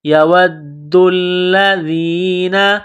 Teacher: واو کو پڑھتے وقت ہونٹوں کو گول کرنا ہے، واو کو دال کے ساتھ ملانا ہے، دال کو دبانا ہے، دال کو لام کے ساتھ ملائیں گے، دال اور لام کے اوپر تشدید ہے تو دال اور لام میں سختی کرنی ہے، دال اور لام کو دبانا ہے۔